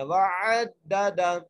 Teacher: عین کو دال سے ملانا ہے تشدید کی وجہ سے